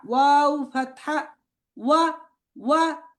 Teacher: ওয়াওটা হচ্ছে ঠোঁট শুরুতেও গোল হয় এবং শেষেও গোল হয় ওয়াও ফাতহা ওয়া ওয়া তারপর ওয়াও কাসরা উই উই ঠোঁট গোল করে তারপরে উই ছড়িয়ে দিতে হবে উই উই ওয়াও দম্মা উ উ ওয়া উই উ ওয়াও উই উ, আবার ওয়াও ফাতহা ওয়া, ওয়াও কাসরা উই, ওয়াও উই, ওয়াও দাম্মা উ, ওয়াও উই উ, ওয়াও উই উ।